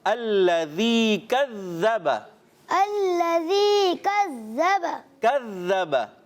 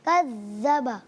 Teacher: ز کی آواز کم کریں گے، اس کو سیٹی نہیں آئے گی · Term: زال